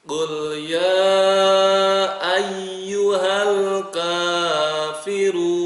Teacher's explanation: Qul ya, 6 ketukan atau 6 harokat atau bisa 5 harokat, 5 ketukan ya.